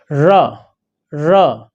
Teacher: इसको लुंठित इसलिए कहते हैं कि जब हम इसको बोलते हैं तो जीभ लुढ़क कर आगे बढ़ती है · जब हम रा बोलते हैं तो जीभ की जो नोक में कंपन हो जाती है। जैसे हम बोलते हैं रा रा, तो जीभ में की नोक में जो कंपन हो रहा है, इस कारण कहते हैं ये कंपन जात है।